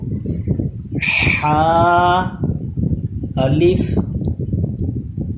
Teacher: ہا حلق کے درمیان والے حصے سے اس میں سانس کی آواز مکس ہو